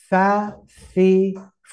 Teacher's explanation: ada sifat yang harus menyertainya yaitu harus menghembuskan nafas pertama yang kedua huruf ha ya huruf ya keluar dari mana